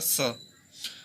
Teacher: और स यानी कि दंत मूल, दांत के मसूड़े से टकरा करके ये स बोला जाता है